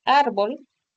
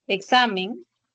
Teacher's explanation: en la palabra árbol, la palabra examen, llevan el acento en la penúltima sílaba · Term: palabras graves